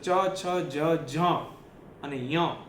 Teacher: ચ છ જ અને ય એ જે છે ને એ બધું એ તાળવા માંથી નીકળે છે